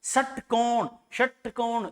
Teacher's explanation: तो षटकोण जीभ ऊपर का मतलब क्या? मूर्धन्य।